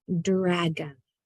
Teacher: In this case, it's the O changes into a schwa sound in dragon